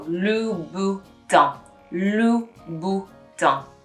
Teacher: The N you don't really pronounce. It's a bit of a silent N.